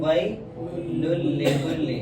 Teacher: لام آئے گا ادغام ہوگا لیکن وداؤٹ گنہ ہوگا. گنہ نہیں کریں گے, جوڑیں گے ضرور ان کو. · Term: ادغام وداؤٹ گنہ